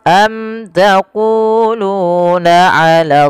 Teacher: sama panjang antara ku dengan lu karena ia mad tabi'i.